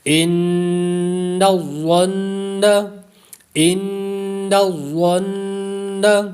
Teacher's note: اور ظا کو پر پڑھیں گے، حروف مستعلیہ میں سے ہے